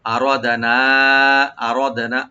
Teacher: হামজা right দিবেন গলা শেষ থেকে, রাটাকে ডিপ করে পড়বো